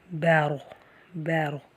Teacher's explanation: اب یہاں پہ را سے پہلے زبر ہے، را سے پہلے زبر پیش یا کھڑی زبر ہو تو ہم اس را کو بھی موٹا پڑھیں گے۔ یہاں سے را سے پہلے زبر ہے اس لیے ہم را کو موٹا پڑھیں گے